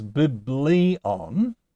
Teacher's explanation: a noun that has an accent on the second to last syllable, like biblion? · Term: acute accent